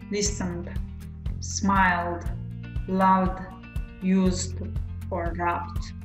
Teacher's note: If the verbs end with voiced consonant sound like n, l, v, s, b. In this case, we pronounce ed just like d.